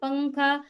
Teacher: तो नून की आवाज हम छुपा रहे हैं एकदम जाहिर नहीं